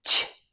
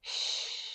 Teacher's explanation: Both are voiceless, no vibration. The CH begins with an explosive T sound, ch, but SH begins with just air flowing, shh. And the air flows freely, there's no stopping it.